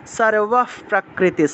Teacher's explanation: বিসর্গ থাকায় পরের অংশটাকে সাথে সাথে ধরতে হয়।